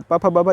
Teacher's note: ओष्ठ्य व्यंजन बोलते हैं क्योंकि ओंठ टच होता है